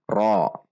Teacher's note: Selanjutnya ra fathah berharokat berdiri, ra 2 harokat mad tabi'i. Huruf ra ketika berharokat fathah maka dibaca tafkhim atau tebal. Ra. Tidak dengan membulatkan bibir, tidak dibaca ro, namun dibaca ra dengan menegangkan atau menaikkan pangkal lidah.